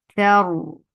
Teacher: Because of this waqf, you are giving sukoon here. And because of this sukoon, the raw will stay heavy because there is fatha before it. Thar. And raw will get the wasat too because of the waqf.